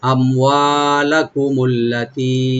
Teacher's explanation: আম হামজাকে right দিবেন, মিম এখানে কোনো কলকলা হবে না, আমওয়া একালে টানবেন। লাকুমুল্লাতি, আল্লাতি লামে টান নাই, তি একালে টানবেন।